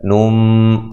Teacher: نون تنوین کا اقلاب ہے مع الغنہ